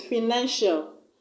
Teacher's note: I'm going to place the stress on the second syllable from the end of the word